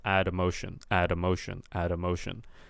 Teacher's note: try to carry the D sound over onto the emotion